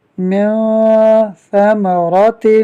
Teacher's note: یہاں نون ساکن کے بعد ثا حروف اخفاء میں سے ہے، جس کی وجہ سے اخفاء ہوگا، یعنی نون ساکن میں غنہ کریں گے۔